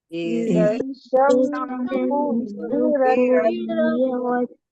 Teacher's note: حمزہ کے نیچے زیر کی اعراب لگی ہے، اس کو جلدی پڑھیں گے، اور زال پر الف مدہ ہو رہا ہے، اور اس کو یہاں پر حروف شمسی کا بھی قاعدہ ہو رہا ہے۔ شین سے ملا کر پڑھیں گے، الف اور لام نہیں پڑھیں گے، شین کو 2 بار پڑھیں گے، تو شین کو میم سے ملا کر پڑھیں گے، اور سین پہ پیش کی اعراب لگی ہے، اس کو جلدی پڑھیں گے۔